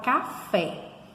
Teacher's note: na palavra café, a gente sabe que a sílaba forte é o fé